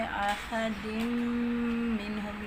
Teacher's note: نون ساکن تنوین کا میم ادغام ہو رہا ہے. احد منہم، یہاں پہ بھی مشدد کا غنہ ہے تو ناک میں آواز لے کے جانی ہے